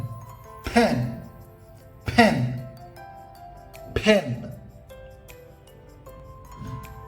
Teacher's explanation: দুটো ঠোঁটের ঠোঁট ঘসার মত হচ্ছে একটা হাওয়া বেরিয়ে আসবে ফি দুটো ঠোঁট বন্ধ থাকবে সেখান থেকে হাওয়া বেরোবে